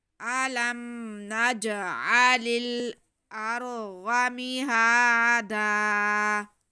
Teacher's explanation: علم نجعل، جیم ساکن ہے، جیم حروف قلقلہ میں سے ہے، تو جیم کو ہم ہل کے پڑھیں گے، تھوڑا جنبش دے کے پڑھیں گے کیونکہ ہم نے قلقلہ کرنا ہے۔